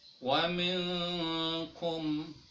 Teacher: dia tidak menyebutkan nun matinya atau tanwinnya, tetapi kita samarkan. Nah, dalam ininya seakan-akan kita mau siap untuk melafadzkan lafadz huruf selanjutnya. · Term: ikhfa